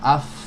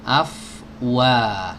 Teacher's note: huruf fa keluar dari ujung gigi seri atas bertemu dengan perut bibir bawah. Af dialirkan, dan alirannya panjang sama seperti huruf kha karena dia punya sifat rokhawah ya.